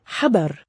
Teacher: Haber is the raspy pharyngeal fricative.